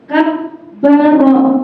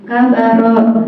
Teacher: tasydid agar ditekan dan ditahan 2 harokat